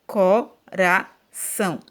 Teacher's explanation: E circulei a sílaba mais forte. A sílaba mais forte da palavra coração é são. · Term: sílaba tônica